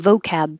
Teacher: if you use the short term vocab like let's do some vocab practice the stress is now on vo